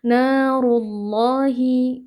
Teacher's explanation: Lafaz Allah di sini kita baca tebal karena sebelumnya berharakat dhammah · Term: lafzul jalalah